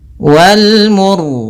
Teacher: Pada bacaan wal mursalati, di sini ini ada alif lam qamariyah, yaitu alif lam yang ditulis dan dibaca huruf lamnya dengan jelas, yaitu adanya huruf alif lam bertemu dengan mim. Kemudian ro-nya di sini kita baca dengan ro tebal disebabkan karena sebelum huruf ro yang disukunkan ada huruf yang dhammah